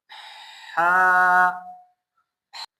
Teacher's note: इसका मखरज है बिल्कुल सेंटर पे, वस्तुल खलक इसको कहते हैं